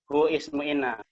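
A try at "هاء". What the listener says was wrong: Bukan hu ya, tapi ha ismu inna, jangan dibilang hu. Karena huruf kalau satu dieja ya, jangan dibaca. Jadi al-ha'u sebagai isimnya inna.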